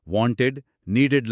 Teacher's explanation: ఇక్కడ ఈడీ ఉచ్చారణ చాలా స్పష్టంగా ఇడ్ అని వినిపిస్తుంది.